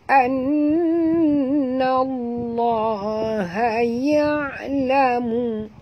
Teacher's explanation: lam pada lafaz jalalah dibaca tebal kerana nun berbaris di atas